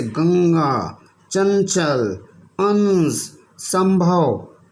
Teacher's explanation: अनुस्वार का उच्चारण नाक से होता है, जैसे गंगा, चंचल, अंश, संभव आदि। · अनुस्वार, अनुस्वार में क्या होता है कि अक्षर के ऊपर एक बिंदी लगा दी जाती है, जैसे ये चिन्ह है। अनुस्वार का उच्चारण नाक से होता है